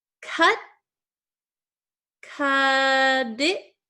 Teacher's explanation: this T is sandwiched between two vowel sounds. So that means that generally we change this T to a flap T.